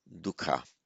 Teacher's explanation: the poet wanted a short syllable there rather than a long one if there'd been a double k it would have made a heavier syllable